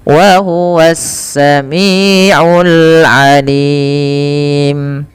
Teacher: Wa huwas, ada alif lam syamsiyah, alif lamnya langsung diidghamkan ke sin, yang sehingga sinnya menjadi harakat tasydid